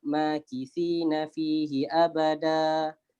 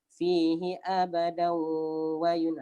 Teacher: Dia berhenti dengan 2 harakat. Ini dipanggil mad iwad.